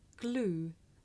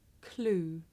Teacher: it may be difficult to tell the difference between this voed sound that you hear at the beginning of the word glue and its voiceless partner that you hear at the beginning of the word clue